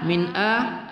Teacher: nun sukun bertemu Hamzah adalah izhar halqi tidak kita dengungkan